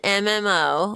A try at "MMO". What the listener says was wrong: Well, because you kind of like enunciate it a little, like an MMO. You know, you put a lot of emphasis on it.